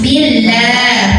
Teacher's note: Karena sebelumnya hurufnya barisnya di bawah kasrah, maka lah tipis. Billah maka lidah datar ya. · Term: lam jalalah